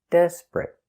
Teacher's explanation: the T at the end is a stop T